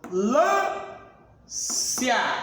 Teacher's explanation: Eu foneticamente não pronunciei o M e não pronunciei o N. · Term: dígrafo